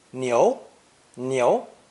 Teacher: the character for ox cow and it's meat beef pronounced second tone